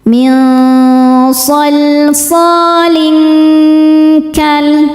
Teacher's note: tanwin disamarkan ke kaf disertai dengung, dan dengungnya banyak karena kaf makhrajnya jauh dari nun. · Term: ikhfa hakiki ab'ad